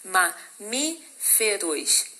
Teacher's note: Mamíferos, também uma proparoxítona. O Mi é a sílaba mais forte